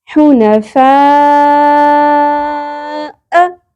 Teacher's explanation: 5 الف کے برابر کھینچنا ہے اس مد اصلی کو